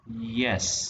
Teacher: when the word yes is uttered as in case of doubt, the tone falls and then rises again, as you would say yes. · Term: fall rise intonation